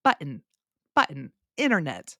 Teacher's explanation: in my particular accent I do not pronounce the t's almost at all